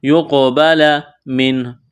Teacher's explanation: فَلَن يُقْبَلَ، قاف یہاں ساکن ہے، قلقلہ کریں گے قاف پر، یقبل من، نون ساکن کے بعد ہا ہے، حروف حلقی ہے، تو یہاں نون ساکن پر غنہ نہیں کریں گے، آواز ناک میں نہیں چھپائیں گے۔